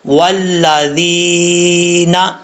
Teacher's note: اب یہاں پر واو کو پڑھتے وقت ہونٹ گول کریں گے، اگر ہونٹ گول نہیں ہوں گے تو سمجھ لیجئے گا کہ واو اپنے مخرج سے صحیح طریقے سے ادا نہیں ہوا۔